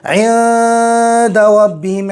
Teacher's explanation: عند میں اخفاء حقیقی ہوگا، گنہ کر کے پڑھیں گے